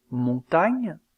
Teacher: il y a blocage de l'air au niveau du palais au moyen du dos de la langue aussi appelle-t-on cette occlusive une dorsop palatale les constrictives labiodental fe